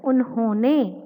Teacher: हो को उच्चारित करते समय नासिका से भी यानी नाक से भी ध्वनि निकलती है, इसीलिए यहाँ पर लगाया गया है अनुस्वार।